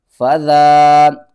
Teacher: ذال کے اوپر کھڑا زبر ہے، ایک الف کے برابر کھینچنا ہے،